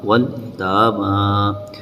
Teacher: تا کو اور میم کو تھوڑا کھینچ کر پڑھیں گے جو کہ اس کے اوپر کھڑا زبر ہے